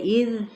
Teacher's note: دیکھیں یہ مد آپ کو نظر آ رہی ہے، اذ ذال کو ہلانا نہیں، یعنی اذ کر کے نہیں پڑھنا، بڑی نرمی کے ساتھ